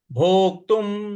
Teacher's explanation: आधा क है इस पर हमको आघात देना है भोक्तुम और त पर जो अनुस्वार है उसका उच्चारण हमें म ले आना है